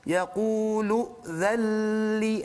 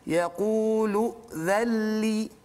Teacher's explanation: Kemudian dzalli tu nun sakinah bertumbuh dengan lam, maka kita panggil dia sebagai idgham bila gunnah. Jadi huruf nun itu masuk ke dalam lam secara kamil, secara sempurna, maka tidak bunyi lagi huruf nun dan tidak ada gunnah di situ.